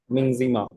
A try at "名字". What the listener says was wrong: Mingze की जगह can you say Mingzi?